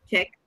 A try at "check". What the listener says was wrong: So you say check. The last sound that you produce is the K, check.